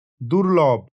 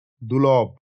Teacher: র লোপ পেয়ে যাচ্ছে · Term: ধ্বনিলোপ